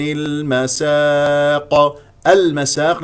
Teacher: قمريه لانه لم ياتي بعدها حرف مشدد المسا مفتوحه الميم والسين ثم نقف على قاف ساكنه مقلقله قلقله كبرى